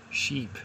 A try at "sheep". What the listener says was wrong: Sheep. Yeah, it's I'm referring to a sheep, not the boat or ship. Sheep. Yeah, it's a sheep.